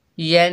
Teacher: या के ऊपर ज़बर, आगे नून मुशद्दद है, या को नून से मिलाकर गुन्ना करेंगे। नून मुशद्दद में हमेशा गुन्ना होता है। यन, नून के ऊपर ज़बर, बगैर खींचे पढ़ेंगे ना।